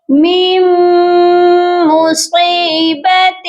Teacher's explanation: میم مصیبت، یہاں پر دیکھیے میم کے ساتھ نون ہے اور اس کے بعد پھر میم مشدد ہے، میم کو ہم میم مشدد کے ساتھ غنہ کر کے پڑھیں گے